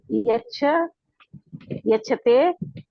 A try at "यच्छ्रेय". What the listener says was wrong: यच्छ्रेय, श्रेय, छ के नीचे र है तो यच्छ्रेय।